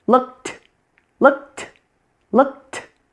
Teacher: there's a puff of air coming from my mouth with the ED sound being a T.